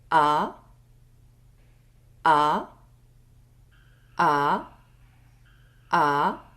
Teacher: I am from Paris. Oral vowel A. Open wide your mouth. A, A, A, A.